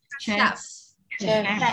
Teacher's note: Ở cuối đưa môi lên răng nhá